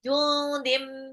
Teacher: tanwin ketemu mim, dilebur dan ditahan 2 sampai 3 harokat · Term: Idgham bi gunah